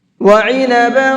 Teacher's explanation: عین کو حلق سے نکال کر کے پڑھیں گے۔